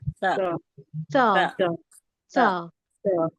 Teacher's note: उसमें सरसराहट नहीं होगी सीन की तरह सीटी वाली एकदम आराम से निकलेगा · सा का मखरज जुबान की नोक को ऊपर के सामने के दो दांतों के किनारे में लगाने से सा अदा होता है